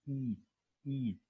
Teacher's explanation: similar to the sound of front close long vowel